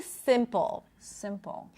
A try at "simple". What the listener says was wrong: right your tongue is a little too low you want to raise it a little bit